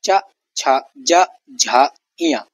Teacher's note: तालु से ध्वनि निकलती है, मधुर उच्चारण इनका होता है। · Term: तालव्य वर्ण